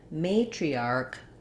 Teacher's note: in matriarch, the may is long and the arc is short